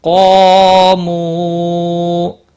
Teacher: مو واو مدہ ہے، ایک الف کے برابر کھینچ کر پڑھیں گے، وقف کی صورت میں بھی۔